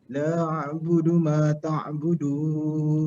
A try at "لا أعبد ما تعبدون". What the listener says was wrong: Okey, panjang harakat dia tuan. 4 atau 5 harakat pada la tu. Mad jaiz munfasil.